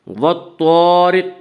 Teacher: والطارق الف مدہ، الف ہمیشہ مدہ ہوتا ہے، الف سے پہلے ہمیشہ زبر ہوتا ہے۔ الف مدہ کو 1 الف کے برابر کھینچ کر پڑھیں گے۔ · والطارق کی را کو باریک پڑھیں گے۔ اس کا قاعدہ ہے کہ را کے اوپر زبر اور پیش آئے تو را کو پر پڑھا جائے گا، را کے نیچے زیر آئے تو را کو باریک پڑھیں گے، یا را کے نیچے زیر اس کے را کو باریک پڑھیں گے۔